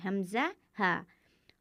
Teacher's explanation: हल्की इसलिए कहा जाता है कि ये 6 हरूफ हलक से अदा होते हैं। हमज़ा हा हलक के निचले हिस्से से अदा होते हैं